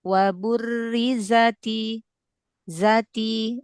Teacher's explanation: Zanya jangan panjang, nggak ada mat.